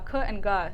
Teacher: they're producing the same place in your mouth good and cut but the difference is with the vocal cords so when we produce the voice consonants our vocal cords vibrate